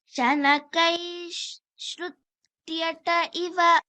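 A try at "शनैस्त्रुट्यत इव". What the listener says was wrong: No, not Shrutyata. Shanakaistrutyata. Yes, Shanakaistrutyata.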